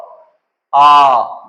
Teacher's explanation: जब आ कहते हैं तो हमारा मुख पूरा खुलता है और यह केवल अकेला स्वर है जिसमें मुख पूरा खुलता है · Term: विवृत स्वर